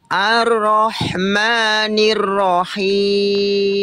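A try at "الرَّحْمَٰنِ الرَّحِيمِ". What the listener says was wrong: Oke, dari A, ar-ro langsung masuk ke huruf ro. Jangan A-nya agak panjang dia. Ar-ro, enggak, tapi langsung Ar-Rahmanir-Rahim.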